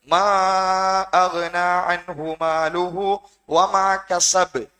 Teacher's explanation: கடைசி பா கல்கலா, நிறுத்தும் போது அழுத்தி நிறுத்த வேண்டும்